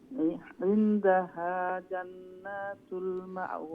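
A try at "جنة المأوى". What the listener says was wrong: জান্নাতুল নুনো খাড়া লং হইতো না জান্নাতুল গুন্না হইব আবার না শর্ট হইব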